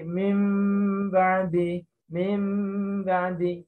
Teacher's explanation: Kelihatannya mim, tapi agak ada udara yang keluar. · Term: ikhfa syafawi